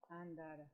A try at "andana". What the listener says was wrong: Andana. Andana, no tara. Andana. La andana.